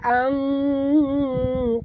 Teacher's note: Angqalu, nun mati bertemu qaf, kita kena sorokkan, sembunyikan bunyi nun mati ke dalam huruf qaf, disertai dengung